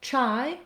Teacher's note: we have just the CH sound, no R, and our same I blend.